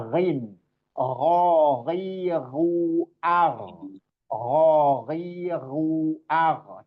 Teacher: ingat dia adanya di halqi paling atas ya